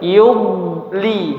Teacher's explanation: jangan sampai dikolkolahkan atau dipantulkan jadi yud ya, jangan yud. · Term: huruf bod sukun